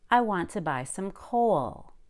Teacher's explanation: I was able to go up on co and down on wool.